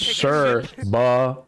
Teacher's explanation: with a stress on the first syllable and a soft C